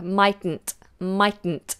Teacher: the T at the end of might it goes a little quieter duller